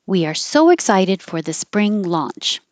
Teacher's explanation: So the invisible Y and the invisible W, otherwise known as intrusive Y, intrusive W, they are pushing their way in there.